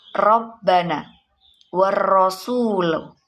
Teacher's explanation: Dalam bacaan ro tafhim menurut bahasa ia adalah tasmim, yang artinya dipertebal atau gemuk. Ro tafhim ini cara membacanya, yakni huruf ro itu dibaca dengan tebal atau tafhim.